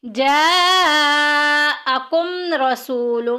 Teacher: میم ساکن کے بعد را آ گیا، اظہار شفوی کا قاعدہ جاری ہو رہا ہے، ظاہر کر کے پڑھیں گے